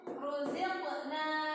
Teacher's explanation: Nah ini namanya rotafim. Kalau rotafim ini cara bacanya tebal, agak cadel sedikit tapi nggak cadel banget ya.